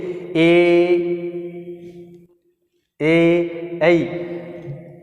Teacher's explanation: जो जीभ है वो तालु के भी स्पर्श कर रही है और कंठ से उसका उच्चारण हो रहा है, ठीक है। कंठ से ए और जीभ ऊपर की ओर जा रही है तो क्या कहलाया, कंठ तालु।